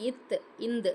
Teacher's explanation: மேல்வாய் பல்லின் அடியை நாக்கின் நுனி பொருந்துவதால் பிறக்கும் எழுத்து